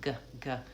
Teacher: G is the stop sound, g, g comes because the air stops and is released